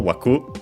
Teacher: It's accented on the last syllable, waku